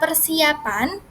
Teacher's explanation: Kemudian kata persiapan menjadi per plus si plus ya plus pan, di mana terdapat penambahan konsonan Y karena adanya huruf vokal I yang bertemu dengan huruf vokal A